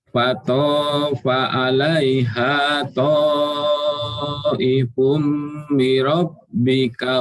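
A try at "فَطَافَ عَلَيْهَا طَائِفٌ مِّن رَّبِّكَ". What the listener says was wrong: Fatafa 'alaiha ta'ifum mir rabbika. Ada tasydid. Mir rabbika. Fatafa. Fatafa 'alaiha.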